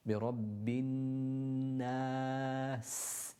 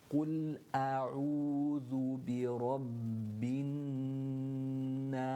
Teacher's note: it needs to have this elongated sound when you're reciting the Seen, a burst of air, and the continuation of the sound of the letter Seen when you're doing that.